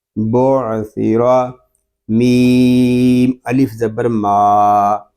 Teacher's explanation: میم کو ہم ایک الف تک کھینچ کر پڑھیں گے کیونکہ یہاں پہ الف مدہ ہو رہا ہے